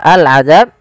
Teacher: alif lam qamariyah, yaitu suaranya diperjelas. Harus dibaca dengan jelas suara lamnya.